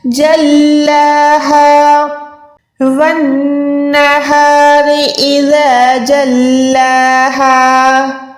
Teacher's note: جیم کو لام کے ساتھ ملا کے لام کو 1 سیکنڈ کھینچ کے پڑھنا ہے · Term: کھڑی زبر